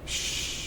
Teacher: The Sheen is making a hissing sound sh through the teeth.